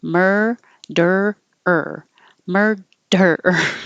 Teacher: hold it in the r position to make the the last ER